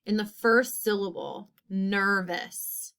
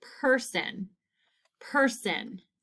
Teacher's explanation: studying the R influence vowel sound in the first syllable of all of these words. So our syllables we are looking for are E, I, and U, and there will be two oddballs.